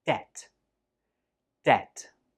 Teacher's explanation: there is no B sound when we say this word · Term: silent B